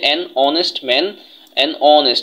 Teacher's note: যেমন দেখো, এখানে বলা হয়েছে যে অ্যান অনেস্ট ম্যান, অ্যান অনেস্ট, এই যে এইচ এর উচ্চারণ তাহলে হনেস্ট হওয়ার কথা, কিন্তু হনেস্ট হয় নাই, অনেস্ট হয়েছে। তার মানে এইচ তার নিজস্ব উচ্চারণটা নেয় নাই, এটা অনুচ্চারিত হয়েছে